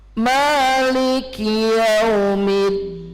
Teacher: Lagu ketiga datar turun